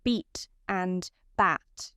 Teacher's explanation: The most distinctive feature of this new accent was its vowel sounds. One aspect of this was vowel length, which was longer in words like beat and bat than in the original accent.